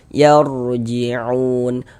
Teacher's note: huruf ra sukunnya juga dibaca tebal. Dibaca tabkhim. Yarjiun unun dibaca panjang.